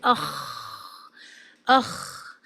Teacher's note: حلق کے اوپری حصے سے، اوپر والے حصے سے ادا کیا جاتا ہے خا کو۔ یہاں فگر میں آپ یہ ایک بلو اسپاٹ دیکھ رہی ہیں، یہاں سے ادا کرتے ہیں۔